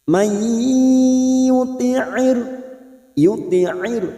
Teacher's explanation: Nun sukun atau tanwin yang bertemu dengan 4 huruf ini, ya, mim, nun, waw, termasuk huruf ya, masuk dan mendengung masuk pada huruf berikutnya yaitu huruf ya dan ditahan selama 3 harokat. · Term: idgham bi gunnah